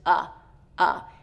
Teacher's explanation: uh is the most neutral vowel sound it's actually the most common vowel sound